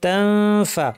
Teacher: আই ইয়াদরিবা মাসালাম, মা লম্বা গুন্না, বাউদাতান ফা, এখানে তানউইনের পর ফা এসেছে, দাঁতকে ঠোঁটের উপর এনে ফা বলার জন্য আমরা রেডি হয়ে নাক থেকে গুন্না করবো